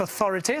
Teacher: l'accent tonique devrait être sur la deuxième syllabe